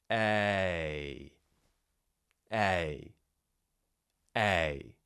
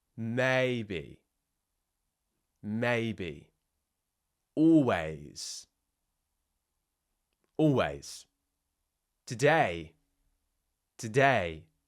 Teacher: Remember, it's a combination of two sounds. We're starting with the jaw half open and the tongue slightly forwards, and then we're moving into more of a kind of closed jaw smiling shape at the end.